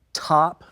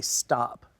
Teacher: You can say top and feel the puff of that top, versus when you say stop. That T right there, that doesn't have that puff, stop, stop.